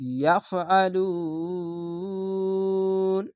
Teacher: বলে এরকম ভাবে অক্ষ ইয়াফালু পেশের পরে ওয়াও সাকিন আর এখানে যদি থামেন বা ওয়াকফ করেন তাহলে এই সাকিনটা নুনের উপরে দিয়ে তিন আলিফ টেনে পড়তে হবে